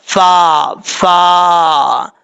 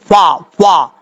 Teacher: اوپر والے جو 2 دانت ہیں ان کا کنارہ نیچے والے ہونٹ والی تری والی جگہ پہ لگے گا تو فا پڑھا جائے گا